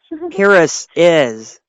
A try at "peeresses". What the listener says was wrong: You're not pausing. You're not enough syllables.